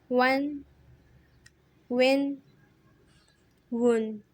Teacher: واو دونوں ہونٹوں کی گولائی سے ادا ہوتا ہے اور واو کو 4 الف کی مقدار کھینچتے ہیں۔